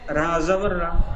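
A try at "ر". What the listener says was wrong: নয়, রা নয়, র। র অক্ষরটি উচ্চারণ করার সময় ঠোঁট দুটি গোল আকৃতি হয়, পুরো অক্ষর। র জাবার র।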